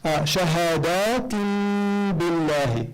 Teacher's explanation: You flip the noon into a meme. You give it a ghunna, and you give it harakatayn in terms of duration instead of one haraka. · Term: iqlab